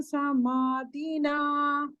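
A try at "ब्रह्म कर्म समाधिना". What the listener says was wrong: Dhi you have to stress.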